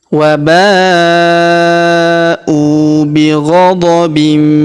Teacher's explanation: Huruf U kita panjangkan dua harakat karena wau sukun di depannya.